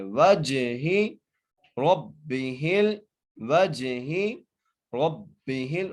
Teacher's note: را کو موٹا کر کے پڑھیں گے، را کو با سے ملائیں گے ، ہا کو لام سے ملائیں گے، حمزہ کو عین سے